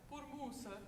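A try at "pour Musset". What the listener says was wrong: Yeah, you said it the same way. Say it a little higher.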